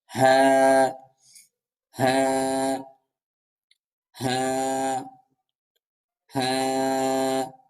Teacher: হাটি উচ্চারিত হবে কন্ঠনালীর শুরু থেকে